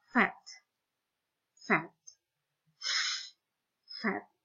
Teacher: tidak ada getaran di awalnya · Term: voiceless